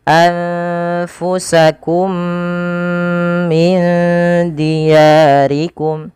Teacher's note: huruf mim yang pertama dimasukkan kepada huruf mim yang kedua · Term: idgham mimi